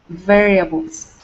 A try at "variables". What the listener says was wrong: All right, very nice.